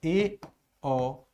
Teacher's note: अर्ध संवृत यानी सकरे से थोड़ा सा ज्यादा खुल जाएगा। अब बोलकर देखना, ए ओ, सर सकरे से थोड़ा सा ज्यादा खुल गया।